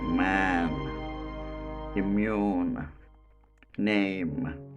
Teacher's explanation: Now, the first nasal sound, the place of articulation, 2 lips, 2 lips. Manner of articulation, unrestricted flow of airstream through nose, and the quality is voiced. The sound is called bilabial voiced nasal consonant.